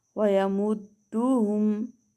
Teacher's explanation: دال حرف قلقلہ میں سے ہے، اس کے اوپر تشدید آ گئی ہے تو یہاں ہم جماؤ خوب ظاہر کریں گے